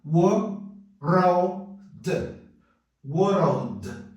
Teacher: Muito simples, tá? Aqui, entre a consoante seguida da letra L, vai entrar o som do schwa